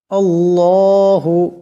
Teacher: আল্লাহু, এখানে আল্লাহর লামকে মোটা করিয়া পড়তে হবে। লা, এখানে মদাসটাকে লম্বা করিয়া পড়তে হবে।